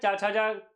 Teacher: च छ तालू में देखिए जुबान ऊपर आ रही है।